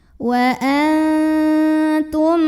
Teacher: maka nun sukun dibunyikan samar-samar menuju huruf ta disertai dengungan, tapi dengungnya sedikit aja karena huruf ta makhrajnya masih dekat dengan nun.